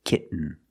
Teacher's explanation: the syllable is not stressed the T makes a different sound we have to make a stop T and Link it to the N · example kitten you can say kitten but most people say kitten you do the stop te kit you you don't release and then you fall to an N kit when you make the stop T the tongue is up